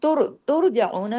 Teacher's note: तुर जना में त बारीक र हैवी